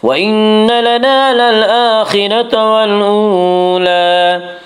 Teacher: نون مشدد غنہ ہوگا، غنہ کی مقدار 1 الف ہے۔ وَإِنَّ لَنَا، الف مدہ، الف ہمیشہ مدہ ہوتا ہے، الف سے پہلے ہمیشہ زبر ہوتا ہے، الف مدہ کو 1 الف کے برابر کھینچ کر پڑھیں گے۔